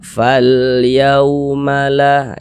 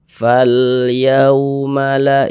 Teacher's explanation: Sebelum waw sukun ada ini, ada harokat fathah, ada tanda baca fathah. Maka huruf waw sukunnya ini adalah huruf lin. Sehingga kita baca lunak, lembut ya. Kita baca fal yaumala, jangan ditekan-tekan atau dikejut-kejut.